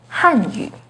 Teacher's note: with the fourth falling tone on han